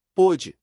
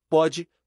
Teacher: diferencia timbre fechado do timbre aberto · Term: assento de timbre